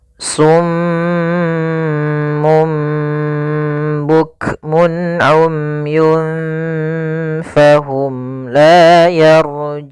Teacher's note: ada bacaan gunnah pada huruf mim yang berharakat tasydid. Maka apabila ada mim berharakat tasydid atau nun berharakat tasydid, maka kita namakan dengan gunnah.